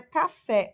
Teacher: O fé é a sílaba tônica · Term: oxítona